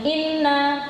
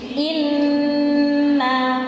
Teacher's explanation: durasi gunnahnya itu akmal, paling sempurna, jadi paling panjang. Jadi nanti ketika baca jangan terburu-buru, ya, jangan inna, tapi inna, karena dia paling panjang.